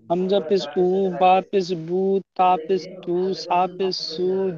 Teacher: পেশের আওয়াজ সামনের দিকে যায় এবং ঠোঁট গোল হয়